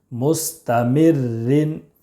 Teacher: را مشدد کے نیچے دو زیر کی تنوین ہے اس لیے را مشدد کو باریک پڑھیں گے مستمر رن ذال را پیش ذر را یا زیر ری ذر